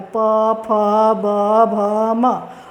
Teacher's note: दोनों ओष्ठ एक दूसरे से सटता है तो ओष्ठ होता है